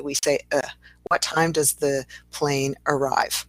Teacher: if we say, what time does the plane arrive? We say a schwa for that A.